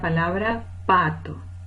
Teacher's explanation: la palabra pato tiene como rasgo suprasegmental el acento en la primera sílaba, es decir, la sílaba tónica.